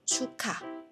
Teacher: 將個▁K▁音同後面嘅▁H▁音夾埋，變成一個送氣音版嘅▁K▁音啦